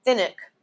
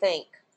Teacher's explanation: when you put an NG and an enk in a syllable because the N is touching the G or the K it welds itself to the following sound and it Alters the way that that um n is is pronounced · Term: welded sounds